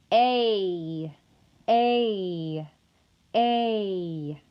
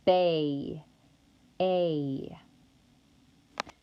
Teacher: the a vowel is produced with the body of the tongue slightly higher than the exact middle of the mouth therefore it is referred to as a high mid vowel and a is also unrounded also it is a tense vowel